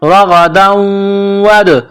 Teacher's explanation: غین کو موٹا کرنا ہے، جس طرح انسان گلے سے بلغم نکالتا ہے اس طرح غین کو نکالنا ہے